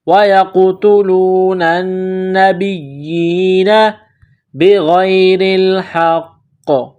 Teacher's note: غین گلے سے بلغم نکالنے کی طرح اس کو پڑھتے ہیں، غین کو موٹا کرنا ہے ، غین کو یا کے ساتھ پلس کرنا ہے، را کے